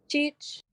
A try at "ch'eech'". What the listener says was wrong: Keep it low though. Cheech. I said, no, that one's high tone.